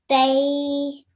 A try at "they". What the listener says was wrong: Good, but remember, keep that thickness in your voice when you say the letter, but don't curve your sound, okay? So don't add a hint of W in your sound, okay? Okay, so right now you're saying tway. Okay, so that's not the right sound to make.